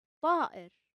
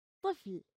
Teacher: The sound of ta is a heavy t. While the regular ta is soft like in tea, the ta is deep and strong. You make it by clicking your tongue against the roof of your mouth.